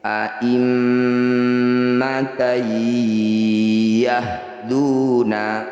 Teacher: Cara bacanya bunyi mim dengungkan 2 harokat dengan merapatkan bibir. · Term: gunnah musyaddadah